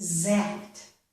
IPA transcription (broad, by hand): zækt